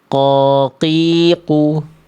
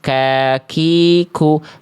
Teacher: Kalau kof pangkal lidahnya nempelnya ke bagian langit-langit lunak saja. Camkan baik-baik, sedangkan huruf kaf pangkal lidahnya nempel ke langit-langit antara langit-langit lunak dan keras. Nah, jadi beda nyentuhnya.